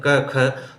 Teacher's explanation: जो जड़ है जिह्वा की वहाँ से उच्चारित होते हैं ये क ख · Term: जिह्वामूलीय